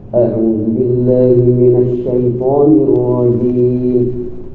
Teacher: hamzahnya jangan sampai tertebalkan karena terpengaruh dengan nada.